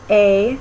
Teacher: your tongue is sort of in the middle it's still front so it's a middle front vowel